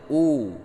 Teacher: memonyongkan bibir dengan sempurna ketika membaca huruf berharkat dhammah